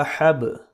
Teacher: حا زبر با حب، با پہ قلقلہ ہوگا کیونکہ یہ حروف قلقلہ میں سے ہے